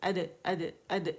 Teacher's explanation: ثنائیولی کے پیچھے سخت مسوڑے, وہاں دال کے مخرج ہے. اد, اد, اد, یہ ریلیز ہے اس کا.